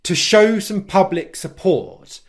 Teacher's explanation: he stressed the stressed syllables in those words so pub in public port in support · Listen to how he said, to show some public support. Can you hear there how he stressed three words? Show, public, support. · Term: english stress, English stress